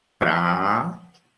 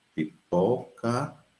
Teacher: Então, prato, você abre bem a boca, pipoca, você fecha mais